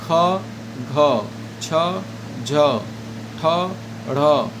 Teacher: महाप्राण जिसके उच्चारण में अधिक ताकत लगता है।